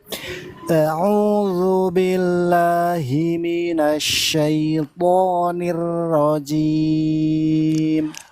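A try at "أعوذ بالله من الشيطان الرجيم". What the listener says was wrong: Kasrohnya jangan B, bukan bella, tapi bila. Nah, jangan miring-miring.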